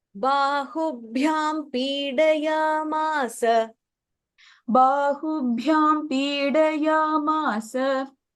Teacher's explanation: bahubhyam bha is a mahaprana, charanabhyam again bha is a mahaprana · and then bahubhyam bha is a mahaprana